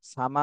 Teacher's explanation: মাতে চার আলিফ টান দিতে হবে